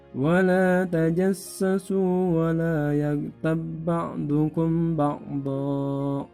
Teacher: Jadi ba-nya tidak dibaca qalqalah.